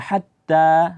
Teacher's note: ta itu huruf yang keluar dari ujung lidah berjumpa dengan pangkal gigi seri bagian atas. Ya, yang dinamakan gigi seri adalah dua gigi yang berada di depan ini, atau dikenal misalkan dengan gigi kelinci, maka dia di pangkalnya itu ujung lidah ditempelkan di situ.